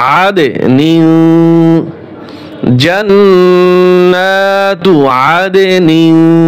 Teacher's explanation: আইন দাল জবর আদ, এখানে কলকলা হবে।